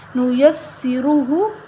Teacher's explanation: ہا یہاں موٹی ہے اور را موٹی ہے ان دونوں کو ہم موٹا پڑھیں گے